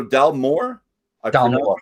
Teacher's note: when there's two words, you're pronouncing the second word more than the first